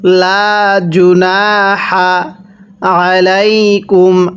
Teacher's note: আইনটা উচ্চারণের সময় গলার মধ্যে চাপ দিয়ে পড়ব